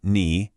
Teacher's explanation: It's a dipping tone. Your voice should go down and then back up. Kind of like a little check mark. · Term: third tone